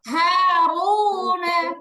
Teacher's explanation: রয়ের পেশ থাকলে জবর পেশ থাকলে র মোটা হয়